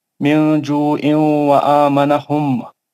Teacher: मीम मुशद्दद है तो यहाँ पे फिर एक गुन्ना हो जाएगा